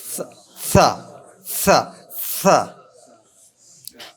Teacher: सरता का स वो दंत दांत से आता है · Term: ऊष्म वर्ण